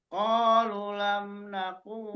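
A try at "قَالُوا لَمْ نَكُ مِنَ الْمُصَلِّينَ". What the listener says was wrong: Lu-nya mat. Lu-nya mat. Qalu. Lu-nya. Qalu itu Pak.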